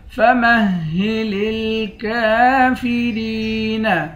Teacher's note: کاف کو ایک الف کی مقدار کھینچ کر پڑھیں گے